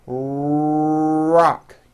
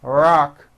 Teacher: notice how my lips are coming forward and my tongue moves back in my mouth and I push out the r sound watch this rock do with me and exaggerate the r Rock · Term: American R sound